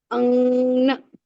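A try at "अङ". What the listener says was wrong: Don't make it na, okay? Anga. Don't change, move your tongue anywhere else. It should be exactly that same spot.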